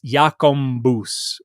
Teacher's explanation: some dialects where you have kind of a nasalization of the B and it's yakumbus which is how it sounds and then uh